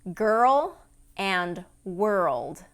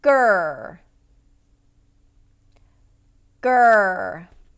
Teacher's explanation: what makes these two words difficult to pronounce is the combination of the R vowel and the dark L. Okay, the R vowel and the dark L, when they're together, tend to be difficult for the tongue to get into position for those two sounds right next to each other.